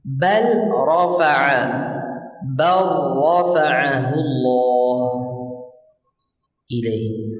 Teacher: Lam bertemu ra, qaf bertemu kaf. Huruf pertama dimasukkan ke dalam huruf kedua, dibaca tanpa gunnah. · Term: Idgham mutaqaribain